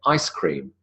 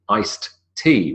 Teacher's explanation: even if it was written with a D we wouldn't pronounce the D we would elide the D